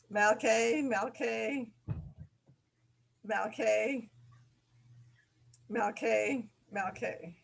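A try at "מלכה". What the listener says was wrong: Okay, but try to remember that it's not the K sound, but rather the H. So it's malche, malche, malche, malche.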